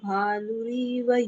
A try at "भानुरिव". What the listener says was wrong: सिर्फ यहाँ पर भानुरीव नहीं है, भानुरिव ह्रस्व है, उसका उच्चारण।